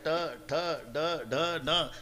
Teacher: वरच्या टाळूला जिभेचा स्पर्श आहे